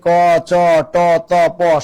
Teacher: আমরা যখন বলি ক, চ, ট, ত, প শ্বাস কম লাগে, অল্প প্রাণ।